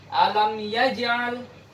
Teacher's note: karena dia qalqalah sughra, dikecilkan bunyi pantulannya dan langsung disambung dengan huruf setelahnya.